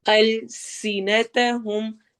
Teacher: سین میں سٹی والی آواز ہوگی